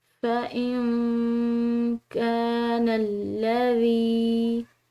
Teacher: تو جہاں پر بھی یا ساکن کا پچھلا حرف مکسور ہو یعنی کہ زیر کے ساتھ ہو تو وہ یا ساکن یا مدہ کہلاتی ہے، اور یا مدہ کو ایک الف کے برابر کھنچاؤ سے ادا کیا جاتا ہے